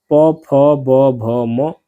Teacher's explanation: जिन वर्णों के उच्चारण में दोनों होठ स्पर्श करते हैं उन्हें ओष्ठय यानी कि ओष्ठ वर्ण कहते हैं।